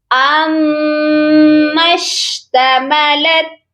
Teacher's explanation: میم کے ساتھ جو الف ہے وہ نہیں پڑھا جائے گا اور اس کے آگے والا الف بھی خالی ہے، اس کو بھی ہم چھوڑ دیں گے. میم مشدد کو شین ساکن کے ساتھ ملائیں گے اور میم مشدد پر غنہ بھی لازمی ہوگا